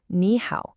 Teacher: When you have two third tones right next to each other, the first one actually changes to a second tone, a rising tone. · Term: tone sundi, tone sandhi